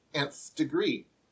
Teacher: implied e sound the short e sound at the beginning